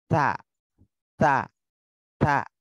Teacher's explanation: huruf ta ini juga lisan bagian ujung, nah dihimpitkan ke gusi depan atas. Nah, ta, ta, ta gitu ya, dihimpitkan ke gusi depan atas.